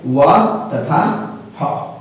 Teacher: इनके उच्चारण में दंत और ओष्ठ दोनों महत्वपूर्ण रोल निभाते हैं। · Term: दंत योष्टि ध्वनियां